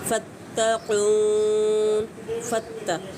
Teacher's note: फत्तक़ून, फत्ता, ता को शिद्दत से अदा करेंगे। क़ून पे मद आरिज़ रफ़ी अप्लाई की जाएगी।